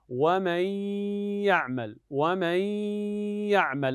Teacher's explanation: الان استمعنا الى صوت الغنه وهي بمقدار حركتين لا تزيد على الحركتين